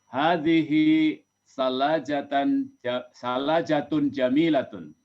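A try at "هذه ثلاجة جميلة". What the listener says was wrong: Mumtaz, mumtaz, mumtaz.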